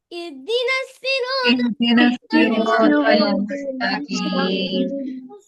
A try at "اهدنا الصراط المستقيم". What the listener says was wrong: بچہ یہاں پہ سواد ہے، سین نہیں ہے، تھوڑا ڈفرنس لگانی ہے خود سے. اہدنا الصراط، طل تل نہیں ہے، طل مستقیم، اور یا مدہ ہے، مستقیم، قاف قاف قاف ہے، قاف قیم قیم، کیم نہیں ہے، قیم. اہدنا الصراط المستقیم.